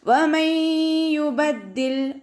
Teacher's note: നൂൻ സാക്കിനയെ യായിലേക്ക് ലയിപ്പിച്ചിട്ട് ഒന്നയോടുകൂടി ഓതാൻ ശ്രദ്ധിക്കുക. ഐൻ കൊൽക്കല ലെറ്ററില്ലാത്തത് കൊണ്ട് ഹാഫ് സുക്കൂന് കൊടുക്കുക.